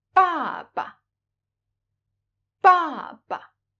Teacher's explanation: the second is pronounced very short and light, without the tone mark on it. We call this kind of syllable the neutral tone or the light tone.